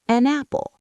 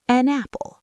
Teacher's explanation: The N attaches to the A, an apple. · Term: linking